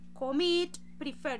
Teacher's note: la fuerza de la entonación la estoy haciendo en la segunda sílaba